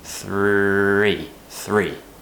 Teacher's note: tongue between the teeth and as we move to the R sound the tongue needs to lift up a little bit higher and curl back slightly